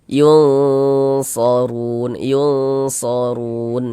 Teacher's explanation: huruf ro dibaca tebal, dibaca tabkhim sehingganya pangkal lisan kita naik terangkat ke atas ketika kita mengucapkannya. Kemudian run dibaca panjang.